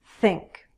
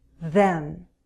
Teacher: we'll use the tip of our tongue and our upper teeth. Again, don't create a stop. Push the air out and create friction. Think. Add your voice.